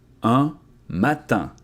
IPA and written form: œ̃ matɛ̃ (Un matin)